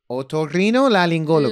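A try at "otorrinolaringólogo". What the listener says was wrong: Laring. No es laling, it's laringologo.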